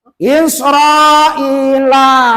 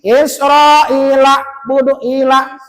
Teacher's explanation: ain itu mempunyai sifat bainiah rohwah wasidah putusnya tidak sempurna tertahannya tidak sempurna maka membacanya jangan diputuskan suaranya kebanyakan kalau tidak hati-hati pasti putus suaranya Berarti itu jadi hamzah.